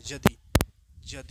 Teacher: शुरुआत में य या और व आवेला तो उच्चारण नागपुरी में बदल के ज हो जाए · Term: य को ज